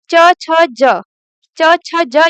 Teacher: जब आप च, छ, ज बोलेंगे तो आपका जो टंग है ऊपर वाले जो तालु होता है उसको टच करता है। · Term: तालव्य